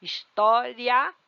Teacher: eu quase não ouço o i